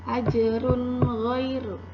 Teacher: tanwin bertemu dengan huruf gha, maka tanwinnya terbaca jelas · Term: izhar